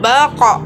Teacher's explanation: Dalam posisi mati maka terdengar suaranya memantul, baqa. Perhatikan contoh berikut.